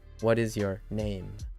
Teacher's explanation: So it'd be, hello, what is your name? With the emphasis on name.